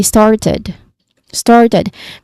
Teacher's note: So the stressed word here is also started, particularly the first syllable star.